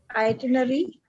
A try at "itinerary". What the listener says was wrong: यहाँ पर 2 बार R आ रहा है. It's 2 times. The R is 2 times, not itinerary. R is 2 times. 2 times R.